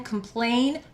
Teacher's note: Plain is the stressed syllable, so you hear the A first.